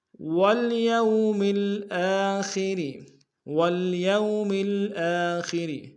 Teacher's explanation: خا کو موٹا ادا کریں گے، را کو باریک ادا کریں گے۔